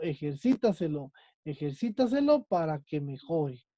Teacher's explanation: la sílaba tónica es la antes de la antepenúltima. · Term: sobresdrújulas